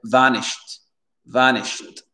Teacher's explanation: Le CH, il rentre dans le D.